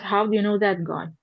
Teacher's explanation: It's WH questions, so it's a falling intonation.